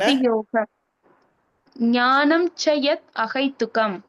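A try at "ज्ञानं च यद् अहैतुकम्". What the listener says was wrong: யத் வரக்கூடாது, ஏன்னா ஞானம் சயத் கொஞ்சம் த த அப்படிதான் வரணும். யத்னு வரக்கூடாது. ஞானம் சயத்.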